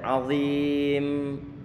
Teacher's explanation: Ini kita memberikan gunnah satu sisi, di sisi yang lainnya kita berikan sifat tawassut pada huruf mim. · Kita panjangkan 5 harokat, kemudian setelah 5 harokat selesai, kemudian memnya antum tarik sedikit, dialirkan ataupun mungkin diseret.